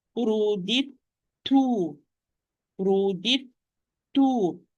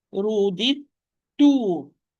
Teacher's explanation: So this dal is totally merged. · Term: idgham mutajanisayni